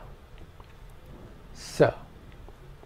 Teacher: And the final is the dental s